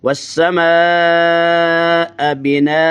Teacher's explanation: مد متصل ہے، 4 الف جتنا اس کو لمبا کیا جا سکتا ہے، 5 الف جتنا بھی کیا جا سکتا ہے۔